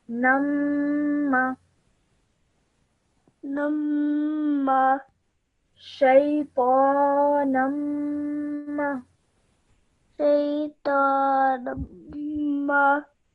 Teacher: you must hold the meme sound in your nose for 2 seconds whilst you're doing it